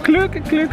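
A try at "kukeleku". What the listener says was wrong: No, there's no L in the first part. Kukulukoo.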